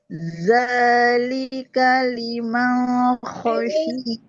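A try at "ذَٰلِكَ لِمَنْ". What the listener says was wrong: jelas. Liman, N-nya jelas.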